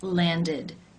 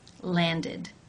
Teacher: form ends an either D or T sound in this case the ending is pronounced with the e as in sit vowel and the D sound for example the verb to land it ends with the D